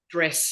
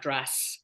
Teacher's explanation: I noticed that the Australian vowels were lowering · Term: vowels are definitely lowering